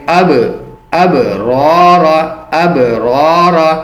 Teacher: قلقلہ کریں گے، آواز کو اچھالیں گے